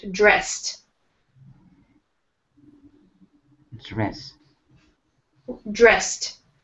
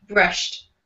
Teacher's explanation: at the end of this word, it ends with the letter D, but let's make this D more of a T sound.